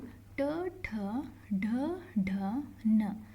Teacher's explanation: ರ ಶ ಳ ಇವು ಕೂಡ ಆಡ್ ಆಗುತ್ತೆ ಅಂತ ಹೇಳ್ತೀವಿ ನಾವು ಓಕೆನಾ ಮುರ್ಧನ್ಯಾಕ್ಷರಗಳು ಅಂದ್ರೆ ನಾಲಿಗೆಯ ಏನಂದ್ರೆ ಮೇಲ್ಭಾಗದಿಂದ ನಾವು ಇದನ್ನ ಪ್ರೊನೌನ್ಸ್ ಮಾಡ್ತೀವಿ